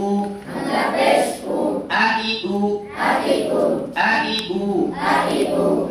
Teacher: হামজার ভিতরে কোনো টান নাই, শক্ত করে উচ্চারণ করতে হবে।